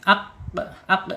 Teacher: tertahan dia ketika dia harakatnya sukun ya aq aq tertahan suaranya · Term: asyiddah